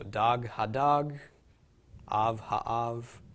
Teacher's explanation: It sounds the same in the Sephardic dialect because the comets and patach in the Sephardic dialect make the same sound